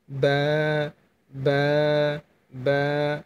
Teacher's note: দুই ঠোঁটের ভেজা অংশ লাগিয়ে রেখে বা হরফটি উচ্চারণ করবেন,